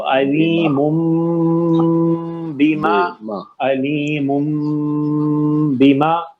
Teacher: تنوین کی ساؤنڈ میں نون ہے نا, اب اس نون کو بدلنا ہے کس سے؟ میم ساکن سے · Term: اخفاء شفی